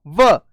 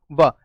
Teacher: फिर बोलो च, दांत आपस में ऐसे चिपकेंगे और फिर चा बोल पाओगे। बोलो व, ऊपर के 2 दांत नीचे के होठ पे टकराएंगे तो उच्चारण होगा व